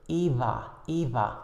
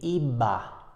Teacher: in Spanish for example between vowels in a word like eva is usually what we call a fricative sound or an approximant sound